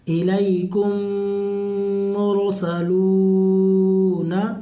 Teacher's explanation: میم ساکن کے بعد میم آئے، ٹھیک ہے، تو اس کو میم میں ملاتے ہیں، اسی لیے غنہ کر کے پڑھا جاتا ہے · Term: ادغام شفوی